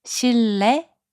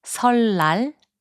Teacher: When the starting consonant 니은 is placed after 리을, its sound also changes to 리을. 실내, which means indoors, is pronounced as 실내.